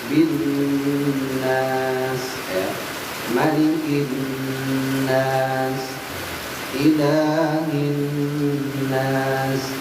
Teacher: harus digentak dan ditahan karena nunnya ada syiddah